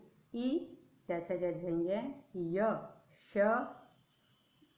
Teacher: ई च छ ज झ य श, इनका उच्चारण स्थान तालु होता है। यहाँ जो श है ये जिसको हम पहले शलगम वाला श कहते थे वो वाला श है, ये ध्यान देना है।